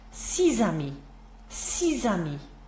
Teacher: that sort of a S, soft S turns into a Z sound